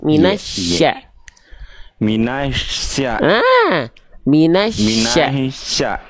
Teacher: tengah lidahnya naikin kayak mau bilang huruf Y, tapi pakai nafas.